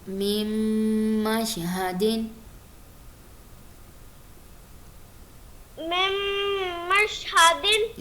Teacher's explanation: دونوں میم کو ملا کے جو ہم آواز پیدا کر رہے ہیں، یہ ہے غنہ